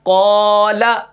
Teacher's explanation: اب یہاں پر کیا ہے قاف بھی موٹا ہوگا، الف بھی موٹا ہوگا